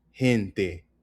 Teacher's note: Emphasis on the hen